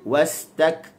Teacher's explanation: Dia sekat, dia syiddah, lepas tu dia lepas hams.